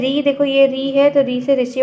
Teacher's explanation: ऋषि वाला ऋ का जो उचार स्थान है वो मूर्धा से होता है